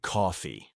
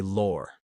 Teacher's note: They don't talk about the law, they say lore. It's all about that stretched aw sound.